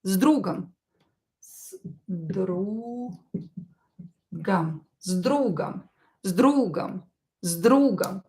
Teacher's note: You can hear here that I pronounce S as Z.